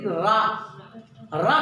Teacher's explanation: हमारी जीभ की नोक जो है मूर्धा से स्पर्श करती है। रा कहते समय हमारी जीभ कहीं न कहीं क्या हो जाती है, मुड़ जाती है। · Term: लुंठित